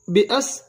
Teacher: الف کو حمزہ ادا کریں گے اور سین کے ساتھ ملائیں گے